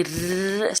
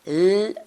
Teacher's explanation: Si veis, L y R se pronuncian en el mismo sitio. Lo que pasa es que la R vibra y la L no.